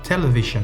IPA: ˈtɛləˌvɪʒən